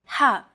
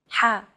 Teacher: you want to make an H sound but with the throat constricted a little